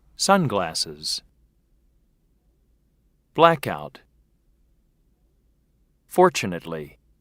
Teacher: note the word stress first syllable